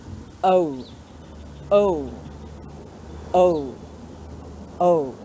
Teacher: we start with the schwa sound. We start with our lips and mouth relaxed, and we move towards the U sound, where our lips make a circle and make the U sound. So push them together, we go O, O, O, O. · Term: diphthong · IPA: əʊ